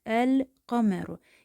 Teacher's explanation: Bu boğaz hərfi hesab olunmur. Ərəb dilindəki q səsini çıxarmaq üçün biz dilin daha kökünə gedirik, hansı ki ondan sonra artıq boğaz hərfləri başlayacaq.